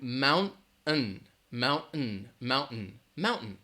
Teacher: it's almost like you're really reducing that second part to mountain